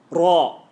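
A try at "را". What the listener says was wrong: That's actually quite good, but it's not. Make it full mouth. Raw.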